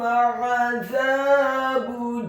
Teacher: huruf ainnya ditekankan keluar dari tenggorokan bagian tengah fathah 1 harokat.